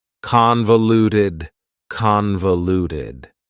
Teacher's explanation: Convoluted also has 4 syllables, and the stress is on the first syllable, convoluted. That second syllable again has that schwa sound, that reduced vowel sound.